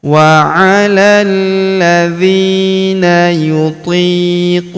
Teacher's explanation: Huruf qu kita panjangkan dua harakat karena wau sukun di depannya. · Huruf hu kita panjangkan dua harakat karena berharakat U terbalik. Kalau harakat U biasa seperti ini dibaca satu harakat.